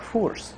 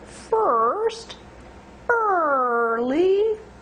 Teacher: make sure the tongue is in the middle of the mouth not the front